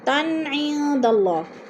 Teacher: تن عند اللہ، تن کی 2 زبر تنوین ہے، آگے حروف حلقی میں سے عین آ گیا ہے تو ادھر اظہار ہو رہا ہے، غنہ نہیں کریں گے۔